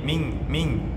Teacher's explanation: Jadi disamar-samarkan antara nun ke huruf jim. Jim posisinya di tengah lidah. Ya, jadi ikhfanya ke tengah lidah.